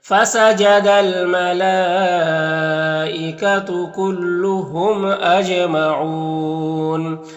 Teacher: یہاں پر میم میں اظہار شفا بھی ہوگا. جیم حروف قلقلہ میں سے ہے تو جیم میں قلقلہ کرنا ہے. اور یہاں پر وقف کریں گے تو مد عارض وقفی ہوگا تو اس طرح سے پڑھیں گے.